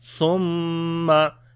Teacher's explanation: On the mim we make gunna due to shadda sign on it.